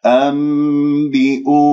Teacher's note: الواو ساكنة قبلها همزة مضمومة، مد بدل بمقدار حركتين